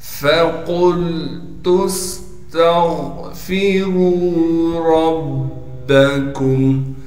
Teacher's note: فا کو باریک کر کے پڑھیں گے, را پر پیش ہونے کی وجہ سے را کو موٹا کر کے پڑھیں گے اور را کو آگے واو مدہ سے ملا دیں گے.